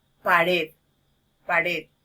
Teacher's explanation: Entonces tenemos que, ahí es donde tiene el acento que estamos escuchando, entonces sería el acento prosódico. Nos estamos dando cuenta que la mayor fuerza de voz está incidiendo en la sílaba, en la última sílaba.